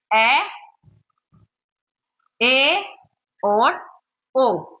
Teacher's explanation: अर्धसंवृत में हमारा मुख का द्वार जो है वो संवृत की तुलना में कुछ थोड़ा सा ज्यादा खुलता है।